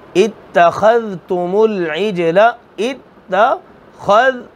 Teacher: خا کی حروف میں سے جن کو ہمیشہ موٹا کرنا ہے، ذال نرمی سے